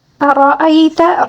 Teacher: را کو پر پڑھیں گے کیونکہ را کے اوپر زبر ہے، ٹھیک ہے؟ اگر زیر ہوتا تو اس کو باریک پڑھتے، ٹھیک ہے؟